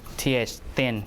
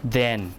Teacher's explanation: So thin is not voiced, and then is voiced